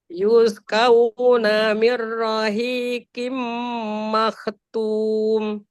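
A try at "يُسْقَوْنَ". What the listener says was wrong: Yusqa, bukan ka. Qauna. Yusqauna. Jangan kauna, bukan ka, bukan a. Ko. Kau.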